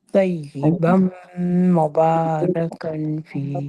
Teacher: تنوین کے بعد میم شدہ ہے، تو طیبم کہنا ہے